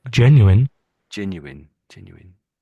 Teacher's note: It's definitely a W. Sound here in the middle, isn't there?